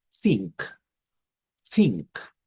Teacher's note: es una TH, pero esta es la TH sin vibrar. Esta es la, así nada más, think, think. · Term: TH sin vibración